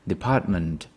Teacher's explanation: The stress is on the second syllable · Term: stress syllable